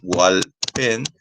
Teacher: También la fuerza de voz termina en la última sílaba pen